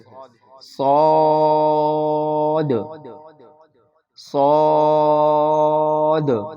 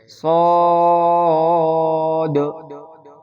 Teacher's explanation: دوسرا لفظ جو ہے وہ صاد ہے، صاد۔ صاد صاد کو پڑھتے وقت ہونٹ کو گول نہیں کریں گے بلکہ صاد کی آواز وہ موٹی ادا ہوگی اور ہونٹ جو ہے وہ سیدھے کھلیں گے اور 5 الف کے مقدار کے برابر یہ لفظ کھینچا جائے گا، صاد۔